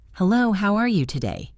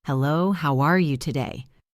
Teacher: Now imagine you are really happy to see a friend. Make your voice go up on the word you and down on today. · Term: intonation